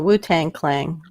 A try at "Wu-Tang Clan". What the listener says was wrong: Wu-Tang Clang? You added an L on that one, honey. You said Wu-Tang Clang.